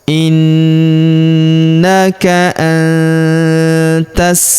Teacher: huruf nun sukun bertemu huruf ta, maka nun sukunnya melebur ke huruf ta, kita baca dengung dan samar. Dengungnya kita tahan 2-3 harokat.